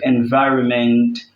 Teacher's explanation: As for environment, the stress falls on the VI because it's still from the end of the word.